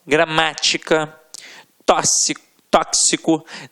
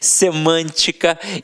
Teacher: a sílaba tônica sempre na antepenúltima sílaba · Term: proparoxítonas